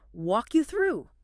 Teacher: you have that hard K at the end of walk crashing into the Y of you